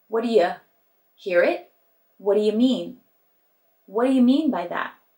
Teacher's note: make sure you link the words do and U so it sounds like what do you hear it what do